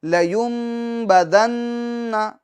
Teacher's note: نون مشدد میں ہم ایک الف کی مقدار گنہ کریں گے